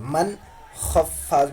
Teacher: وقت ہم کیا کرتے ہیں اس وقت ہم اظہار کرتے ہیں تو نون ساکن کو ظاہر کر کے پڑھتے ہیں